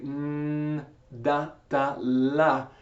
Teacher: N has the same placement as da, ta, la